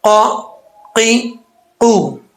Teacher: قاف زبان کی جڑ اوپر والے تالو کا جو نرم حصہ ہے اس سے لگے گی تو یہ قاف پڑھا جائے گا